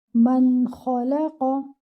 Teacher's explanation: You will read the noon clearly. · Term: idhar